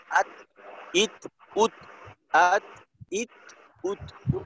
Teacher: আর জজমের উচ্চারণটা আত, এই আত আত বলার পর একটু বাতাস বের করতে হবে।